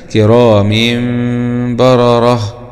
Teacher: نلاحظ أن هذا التنوين بالكسر وجاء بعده حرف باء، فهنا يتم قلب النون هذه التي تنطق ولا تكتب، يعني نون التنوين تقلب إيه إلى ميم بغنة مع الإخفاء. والثالث الإقلاب عند الباء ميم بغنة مع الإخفاء